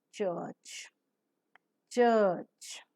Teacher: During the articulation of this sound, the soft palate is raised to shut off the nasal passage of air. A complete closure is formed in the oral cavity by a firm contact that is made between the tip and the blade of the tongue and the alveolar ridge. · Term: ch sound